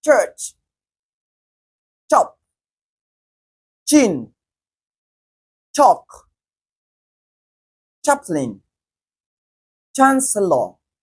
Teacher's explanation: the first sound we have in each of those words is voiceless